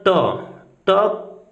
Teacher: ट का उच्चारण करते समय हमारी जिह्वा मुड़ जा रही है। तो अगर मुड़ जाएगी तो मूर्धन्य वर्ण कहे जाएंगे।